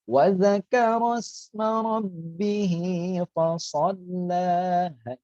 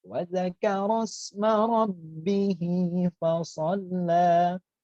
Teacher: Rabbih bertasydid ditahan kemudian dibaca lagi